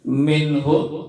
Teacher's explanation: Minhum, nun mati ketemu ha, maka dibaca izhar, harus dibaca jelas.